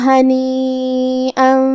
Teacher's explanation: مد واجب متصل کا معنی ہے کہ حرف المد اور اس کی وجہ جو کہ حمزہ ہے دونوں ایک ہی کلمہ میں ہو. مد واجب متصل میں ہم اپنی آواز 4 مد کے برابر لمبی کریں گے